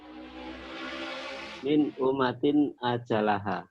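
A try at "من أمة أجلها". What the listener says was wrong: Nah ini mimnya gunnah ya. Kan pelajaran kemarin, malam minggu yang kemarin. Min ummatin ajalah. Gunnahnya dibaca. Hukumnya apa? Kenapa? Satu nun mati ketemu alif atau hamzah ini ya. Nun mati ketemu alif. Ada 2 ternyata. Kedua boleh. Bilang tanwin ketemu alif boleh. Tapi saya pengennya khusus. Tanwinnya apa ya? Tanwinnya apa ya?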